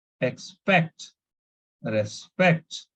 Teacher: So we need to stress on the last syllable.